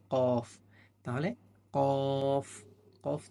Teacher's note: জিহ্বার গোড়া তার বরাবর উপরে তালির সঙ্গে লাগাইয়া একটি হরফ উচ্চারিত হয়